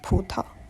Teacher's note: It is unique in Wu Chinese because in Mandarin, both syllables will start with voiceless stops